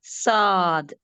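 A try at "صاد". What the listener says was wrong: சாத்னு சாதாரணமா சொல்லக்கூடாது, ஹெவி. சாத்.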